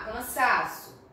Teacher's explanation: O sa é a penúltima sílaba mais forte, então ela é uma palavra paroxítona.